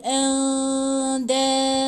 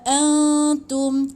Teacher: Jadi dia macam kena dengung dan dia kena dengung dan dia kena sembunyikan bunyi nun tu. Dia tak sebut andadau, tak, tapi dia macam andadau. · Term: ikhfa